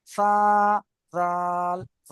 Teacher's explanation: জিহ্বা বার করে 3টি অক্ষর পড়তে হয়, সা, জাল, জ